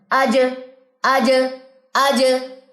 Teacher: بس یہ چیز ہے جو ہم نے جہر میں لانی ہے کہ اس میں آپ کی کوئی بلندی، کوئی قوت، مخرج کے اوپر بھرپور کہہ لیں اعتماد ہونے کی وجہ سے، پکڑ ہونے کی وجہ سے بلندی اور قوت جو ہے وہ آ جاتی ہے، ووکل کارڈ بند ہو جاتے ہیں، سانس بند ہو جاتی ہے اور وائبریشن پیدا ہو جاتی ہے